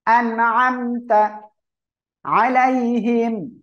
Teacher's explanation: নুন সাকিন এর পরে আইন আসছে, স্পষ্ট আকারে পড়তে হবে